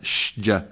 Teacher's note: Watch out for the American changing of a sin to a sheen